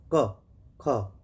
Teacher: अघोष का मतलब हुआ जिनको हम बोलेंगे और वायु बहुत तेजी से नहीं निकलेगी यानी हमारी जो स्वर तंत्रियां हैं उनमें कंपन नहीं होगा